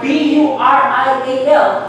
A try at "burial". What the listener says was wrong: It's the same. Burial. Okay?